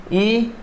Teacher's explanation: ई और च्वरग, इनका उच्चारण स्थान तालु रहेगा